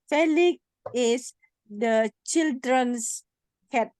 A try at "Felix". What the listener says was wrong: Ada pakai X ya. X. Jadi bacanya itu ada X nih di belakang.